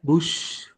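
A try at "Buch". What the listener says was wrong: It's not bush, it's book.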